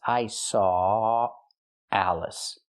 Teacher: We don't pronounce the W. There's no w sound in it. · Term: Link the sounds